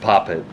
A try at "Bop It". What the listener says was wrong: Bop it, not pop it. Bop it. Yeah, bop it. Bop it, yep.